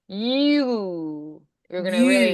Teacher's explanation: The U is more rounded. So like you, it's going to be more pronounced and rounded.